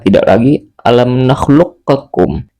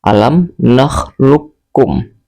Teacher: Maka tidak lagi alam nakhluqakum, tetapi langsung dimasukkan ke huruf kaf tanpa ada qalqalah. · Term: idgham mutaqaribain